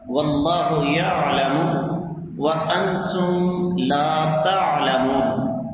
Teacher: عین ہے جو انسان کے حلق کے درمیان سے ادا ہوتی ہے